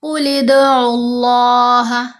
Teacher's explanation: आइन के ऊपर पेश होने की वजह से लाम को पुर पढ़ेंगे, मोटा पढ़ेंगे।